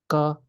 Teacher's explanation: it's more like the sound is in the front of the mouth. Ka, even like my native language is Spanish, and I also feel like when we're speaking Spanish, the sound is somehow more like on the front.